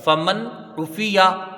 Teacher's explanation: فمن نون ساکن ہے، نون ساکن کے بعد حروف حلقی میں سے عین آیا ہے، تو یہاں پر اظہار حلقی ہوگا، نون کو ظاہر کر کے بغیر غنہ کے جلدی پڑھا جائے گا